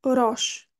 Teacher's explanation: aqui o o é aberto e o s como vem no fim da palavra tem o som de X